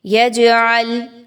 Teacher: جیم پر جزم کا نشان ہے، جیم قطب جد، قاف طا با جیم دال حروف قلقلہ میں سے ہے، آپ نے یہاں پہ جیم کو تھوڑا سا ہلا کے پڑھنا ہے۔